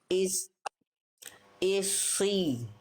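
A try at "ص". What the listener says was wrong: Cuma jangan pakai monyong. Kerasa Bunda.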